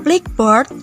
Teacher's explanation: Fonem K dari kata black tidak menjadi fonem G akibat kebersuaraan fonem B yang berikutnya. Dan fonem B tersebut tidak menjadi fonem P akibat ketidakbersuaraan fonem K yang mendahuluinya.